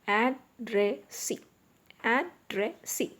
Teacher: The stress is on the last syllable.